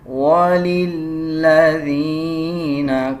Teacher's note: لام کے اوپر شد ہے، لام کو مضبوطی کے ساتھ ادا کیا جائے گا